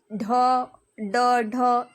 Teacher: Next देखेंगे उच्छिप्त व्यंजन। जिन व्यंजनों के उच्चारण में जीभ के अगले भाग को थोड़ा ऊपर उठाकर झटके से नीचे फेंकते हैं उन्हें उच्छिप्त व्यंजन कहते हैं।